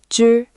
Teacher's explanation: Retroflex, tongue curled up. >> c >> c Dental, tongue flattened forward with a puff.